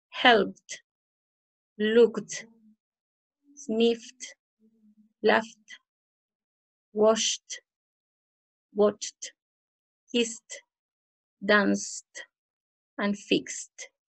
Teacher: si nuestro verbo termina con una consonante no sonora, que si tú te tocas el cuello y no suena, no vibra, tenemos que pronunciar con t al final